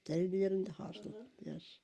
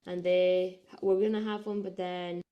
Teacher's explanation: a sort of noisier, laxer phonation, more sort of breathy in the older speakers compared to a more modal-like tenser phonation in those younger speakers